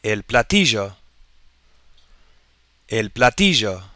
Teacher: You may hear the double L pronounced in areas like Argentina as a zh sound.